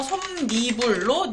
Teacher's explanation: 합성어와 파생어에서 앞머리 자음으로 끝나고 뒷말이 모음이나 반모음 b로 시작할 때 니은이 덧붙여 발음되는 현상입니다